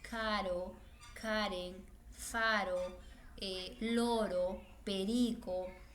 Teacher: la r se sitúa entre dos vocales pero tiene un sonido débil